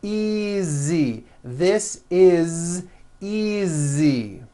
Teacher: Again, the S is like a voiced Z.